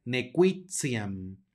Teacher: la t va a sonar como ts